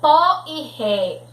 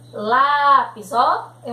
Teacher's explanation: Eles vão ser chamados de monossílabos tônicos porque eles têm acento agudo. Então, eles são pronunciados com força e com som aberto